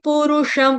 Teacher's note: ऊपर बिंदी अनुस्वार उसका उच्चारण हलंत म के साथ करेंगे क्यों क्योंकि आगे प से स्टार्ट हो रहा है वर्ड